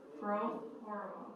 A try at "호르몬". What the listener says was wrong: 호르몬이라고 해. 호르몬 하지 말고. 어디 혀를 불리고 있어요? 여기가 뉴욕이야?